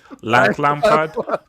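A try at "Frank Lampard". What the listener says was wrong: it should be Larank. The R, don't forget the R.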